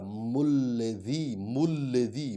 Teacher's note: میم کو لام میں ادغام کریں